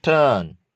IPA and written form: tɜn (turn)